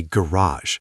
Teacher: Americans say garage with the stress at the end and almost a French-influenced sound.